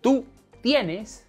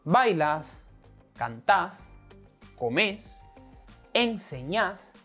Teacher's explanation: Also, when using vos, in most of the cases, the verb is in a different form, which accentuates the last syllable